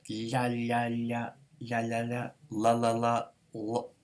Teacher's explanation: And there's even a palatalized lateral approximant where the top of your tongue is sort of hitting the hard palate